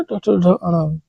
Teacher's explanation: इसका उच्चारण मूर्धा से होता है, और इस वर्ग के जितने भी अक्षर हैं उनको मूर्धन्य ध्वनि के द्वारा उच्चारित करते हैं।